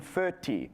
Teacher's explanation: that O vowel shifted forward in the mouth. So instead of foti, it became furti.